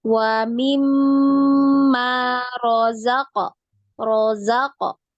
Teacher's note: Mim di sini ada tasdid, ya. Mim di sini ada tasdid, berarti wajib digunnah, ya, wajib didengung, ya. Dengungnya kemudian ditahan 2 harokat, ya.